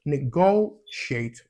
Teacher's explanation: Like it's nego, so it's stressed on the second syllable